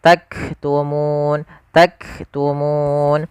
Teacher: sifat hamasnya yaitu tahan dulu suara kafnya karena dia sukun sebagaimana huruf ta Ak baru nafasnya kita lihatkan jadi berurutan yang pertama syiddahnya baru